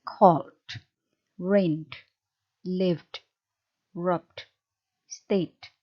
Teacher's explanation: Nah, bunyi-bunyi yang seperti itu disebut sebagai bunyi voiced. Ketika akhiran ed menempel pada bunyi-bunyi voiced, maka akhiran itu akan Anda ucapkan menjadi deh ya.